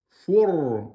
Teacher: Le ra, il est sukun. Il est précédé de la damma, donc il est emphatique.